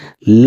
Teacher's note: पार्श्विक वर्ण, पार्श्विक वर्ण में वह वर्ण होता है जो जीभ के अगले भाग यानी कि मसूड़ों को छूता हो और वायु यानी कि हवा दोनों बगल से निकल जाती है, उसे हम पार्श्विक वर्ण कहते हैं। · वायु यानी कि हवा दोनों बगल से निकल जाती है उसे हम पार्श्विक वर्ण कहते हैं और वह ल होता है और वह ल होता है।